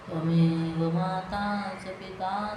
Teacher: Tva short, me long, va short, ma long, ta long, cha short, pi short, ta long.